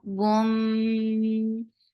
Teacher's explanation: this is idgham with a gunna you're keeping the sound in your nose for a longer time boom mim for kasra give e sound and then attach with mim get sifa of gunna and this is akmal gunna So keeping the sound in your nose for a longer time.